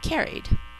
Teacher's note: the A and the R are acting as two separate sounds, not as the R as in car.